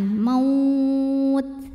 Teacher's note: Jangan lupa keluarin hamas di huruf ta ya. Kalau taknya sukun, hamasnya anginnya belakangan.